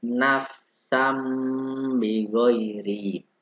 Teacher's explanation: fathah tanwin atau nun diikuti dengan huruf ba. Maka yang suara n berubah menjadi mim. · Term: iklab